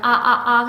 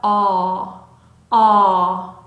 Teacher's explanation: 입 앞에서 나는 아 아 소리가 아니라 목구멍이서부터 어 어 하고 올라오는 소리면 좋겠습니다. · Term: 단모음 어의 소리